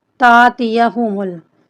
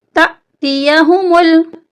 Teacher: हमजा के ऊपर जज़म है, यहाँ पर हमने हल्का सा झटका देके पढ़ना है